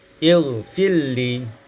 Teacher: ilfirli, idghamur ra fil lam sehingga kita baca ilfilli.